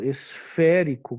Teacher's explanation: esférico, que é uma proparoxítona, ou seja, a antepenúltima sílaba é tônica